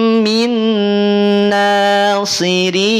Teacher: disertakan dengan gunnah, dengan kadar gunnah yang sempurna, sehingga ketika kita tutup hidung kita akan terhenti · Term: bi gunnah kamil